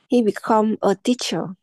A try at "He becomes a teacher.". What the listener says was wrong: Từ từ, nhìn từng nhịp một em đọc vội nó sai. Become có chữ Z nữa, đọc cho đủ.